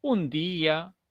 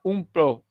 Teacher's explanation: En esta expresión, la N, a la altura de la N, se juntan los labios. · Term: el fono de la M